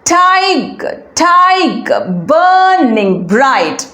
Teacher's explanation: the first line begins with a stressed syllable followed by an unstressed syllable, stressed unstressed pattern, which means it is a trochee.